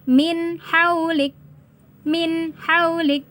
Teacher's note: Maka nun sukunnya dibaca jelas. Jangan samar-samar. Huruf ha-nya juga harus dibaca jelas, jangan didengungkan ya.